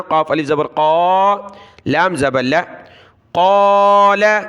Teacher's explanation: قاف کو کھینچنا ہے کیونکہ قاف کے ساتھ الف ہے، لام کو نہیں کھینچنا